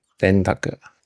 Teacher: Usually it gets written as an N in English, but it's more like a nasally N, or sometimes it's more like the NG sound, like the N in like king.